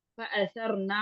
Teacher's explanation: फअसर, फअसरना, नून जबर ना, फअसरना लंबा करेंगे तो अलिफ लग जाएगा, ठीक है, तो अलिफ नहीं लगाना हमने, हमने नून की जबर को छोटा करके पढ़ना है